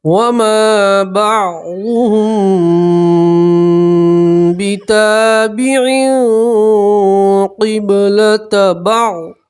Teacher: میم ساکن کو ناک میں چھپا کر پڑھیں گے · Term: اکفا